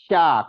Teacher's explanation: ringan kalau Sya ini ada sifat tafasi namanya tafasi itu eh keluarnya angin menyebarnya angin di permukaan lidah kita di dalam Mut ga mulut Sya menyebar angin-anginnya lebih banyak menyebar